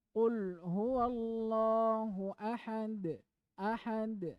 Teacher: berapa enam harakat kemudian kalau huruf yang Qalqalah nanti akan datang ada huruf yang harus dipantulkan kalau dia dibaca mati di antaranya apa Huruf Dal